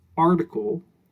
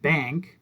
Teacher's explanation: we have article, where the A sounds like ah, or we have bank, where the A sounds like eh